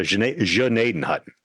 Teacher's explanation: It's almost like an sh sound at the beginning.